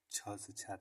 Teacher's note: तालव्य महाप्राण अघोष व्यंजन वर्ड का उदाहरण